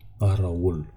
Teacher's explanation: And this V, it's not, as I said, when we studied consonants, I told you that it's not V, it's a W.